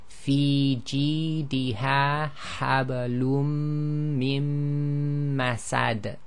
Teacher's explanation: there's a qalqala on that last dal. But essentially the noon sakin is not pronounced, the dal is actually recited as sakin.